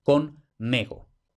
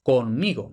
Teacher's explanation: ¿De dónde ha salido ese cambio de timbre? Porque una E no evoluciona a una I.